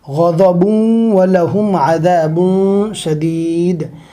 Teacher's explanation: غضب با کو واو سے ملائیں گے اس لیے کہ واو کے اوپر تشدید ہے. اب جب واو سے ملائیں گے تو دو پیش پورا نہیں پڑھنا ہے بلکہ صرف ایک ہی پیش پڑھنا ہے.